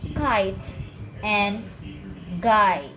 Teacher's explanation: you can stop the air with the back of your tongue and your throat